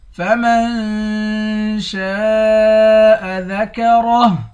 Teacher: فمن میم کو نون کے ساتھ ملا کر نون پر اخفا کریں گے۔ شین کے بعد الف ہے، اس الف پر مد ہے، اس مد کو 5 الف کے مقدار کھینچ کر پڑھتے ہیں۔ را کو موٹا پڑھیں گے، آخر میں ہاں ہے، ہاں کو ساکن کر دیں گے۔